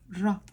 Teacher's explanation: I'm blending 2 sounds together. Basically, I'm bringing the h and the j together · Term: 2 syllables